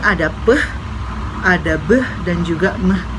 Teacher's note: konsonan yang diproduksi itu terjadi di dua bibir kita